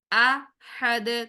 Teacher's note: دال کو ہم ساکن کریں گے، سکون عارضی لگائیں گے اور دال کو ہلائیں گے